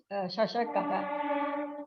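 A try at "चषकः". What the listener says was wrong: Chashaka. Not Shashaka. Chashaka. Shashaka is different. Chashaka. Palatal, cerebral. Chashaka. Chashaka.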